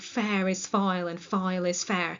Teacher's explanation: So the witch's rhythm is called trochaic tetrameter. You can hear that rhythm in lines like fair is foul and foul is fair.